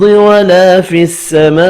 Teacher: ولا الف مدہ ہے, ایک الف کی مقدار میں کھینچ کر پڑھنا ہے. فی السماء بڑی مد کو 5 الف کی مقدار میں کھینچ کر پڑھیں گے. وف کی صورت میں حمزہ ساکن پڑھا جائے گا.